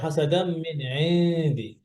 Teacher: এখানে এই নুন যেন হিডেন থাকে, যেন কি বলে ক্লিয়ার না হয়ে যায়, স্পষ্ট না হয়ে যায়। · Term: ইকফা গুন্না